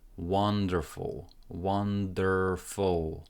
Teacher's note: Stress goes onto the first syllable, and there is no E here, and there is no U. · It feels like there is a sound between F and L